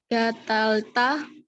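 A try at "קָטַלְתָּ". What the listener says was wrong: Bukan gatal. Katal.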